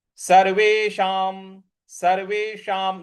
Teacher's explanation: देखिए, स सर्वे और उसके बाद जो षटकोण वाला श है, सर्वेशाम, तो जीभ को रोल करके ऊपर मूर्ध्वा पे लगाएंगे। और जो अनुस्वार है उसके आगे म लिखा हुआ है, तो इस अनुस्वार का उच्चारण भी हमें म ही ले आना है।